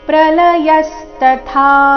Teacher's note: ಕೊನೆಗೆ ಥಾ ಮಹಾಪ್ರಾಣ ದೀರ್ಘ.